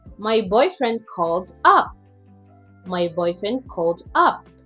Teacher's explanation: the primary stress moves to the adverb. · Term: verb and the adverbial